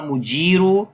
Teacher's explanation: ya madda is there, and ra we read in heavy sound